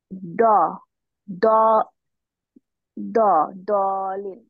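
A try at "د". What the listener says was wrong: তোমার উচ্চারণটা কেমন? না আমি বলছি তোমার সাউন্ডটা কিছুটা বাংলা ড এর মতো আসতেছে।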